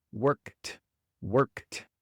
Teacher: Cuando un verbo termina en un sonido sordo, como la K, un sonido que se pronuncia sin vibración de las cuerdas vocales, entonces naturalmente va a salir una T al final.